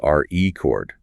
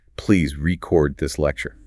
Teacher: if I push the stress to the second syllable, re-CORD, it suddenly transforms into a verb.